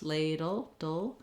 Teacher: In ladle, we have the dark L sound. So basically we're going right from our D, or our flap, ladle, dull, into that L sound. The back of the tongue drops, ladle, dull. You're just trying to move quickly from the D to the L, and the letter E is silent.